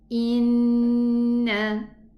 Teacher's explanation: Now we have a 2 counts for the noon and make a proper ghunna.